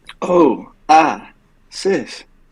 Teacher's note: they put emphasis on the ah